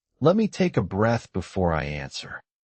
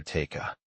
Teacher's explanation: Notice how take a flows together